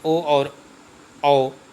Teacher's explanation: कंठोष्ठ, कंठ और ओष्ठ ध्वनियों के संयोग से